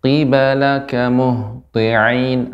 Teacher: Nah, qi bagian langit yang lunak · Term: qaf